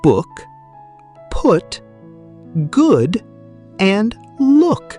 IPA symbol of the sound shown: ʊ